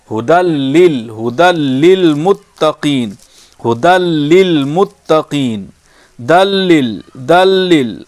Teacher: ھدی للمتقین، ھدی للمتقین، دلل، دلل، دال کو لام سے ملا دیے، ھدی للمتقین، دیر نہیں کر رہے ہیں، بغیر گنگناہٹ کے ملا رہے ہیں